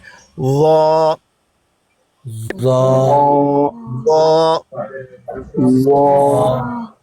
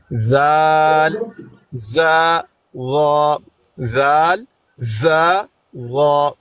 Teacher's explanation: صرف ایک کام ہے کہ لا کو مفخم پڑھنا ہے, موٹا پڑھنا ہے